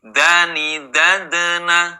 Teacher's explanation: ketika dal sukunnya ini di tengah kalimat, maka dipantulkan dengan tidak terlalu kuat. Berbeda ketika berhenti di akhir kalimat.